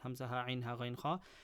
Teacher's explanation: These are the 6 letters that are pronounced from the throat. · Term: throat letters